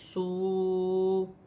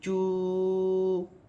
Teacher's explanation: واو ساکن سے پہلے پیش آ رہی ہے تو یہ واو مدہ بن رہی ہے اور اسے ایک الف کی مقدار کھینچ کر پڑھا جاتا ہے